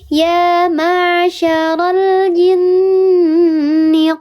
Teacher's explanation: Dibacanya dia didengungkan lebih utama 3 harokat daripada 2 harokat. Ya. 3 harokat dibacanya dengung. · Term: gunnah musyadadah